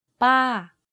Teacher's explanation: my pitch went up and then down very slightly. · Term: falling tone